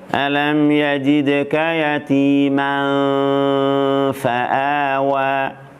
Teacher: makhraj fa, ujung gigi seri atas dan perut bibir bawah misalnya, yakni bibir bawah bagian dalam.